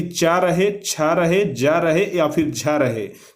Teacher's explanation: च वर्ग का उच्चारण स्थान तालु से होता है